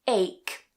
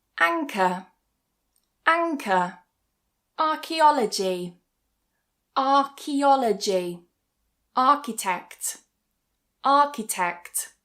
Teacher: So it's not ch like in cheese, but it's K, like for example in ache.